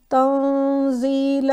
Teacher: تنزیل یعنی یہاں پر رول of اخفا apply ہوا ہے کہ نون کو میں نے نیزل یعنی مخفی انداز میں پڑھا